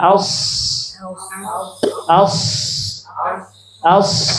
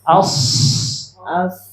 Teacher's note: kalau huruf Shad itu makrajnya di ujung lidah bu ya ujung lidah bertemu dengan pangkal gigi seri bawah